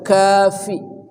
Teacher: Fa juga berdesis hamas, jadi mesti sempurna udaranya.